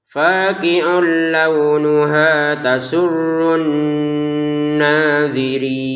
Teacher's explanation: Nanya 2 harokat didengungkan ya.